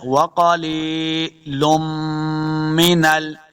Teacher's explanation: وقلیلم من ال، لام 2 پیش میم، میم مشدد ہے، میم کے ساتھ ملانا ہے اور غنہ بھی کریں گے۔